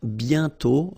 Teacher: And then the final T is not pronounced.